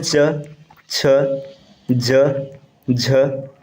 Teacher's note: च वर्ग का होता है तालव्य